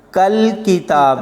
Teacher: یہاں پر کاف کو لام کے ساتھ ملاتے ہوئے کلکلا نہیں ہونے دینا۔